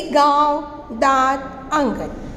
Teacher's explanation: अनुनासिक, ऐसे स्वरों का उच्चारण नाक और मुंह से होता है और उच्चारण में लघुता रहती है।